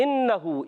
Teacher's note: इन्नहु, ये भी हमज़ा है, खूब ज़ाहिर करके पढ़ेंगे। और नून पर तशदीद है, नून मुशद्दद है, एक अलिफ का गुन्ना करेंगे।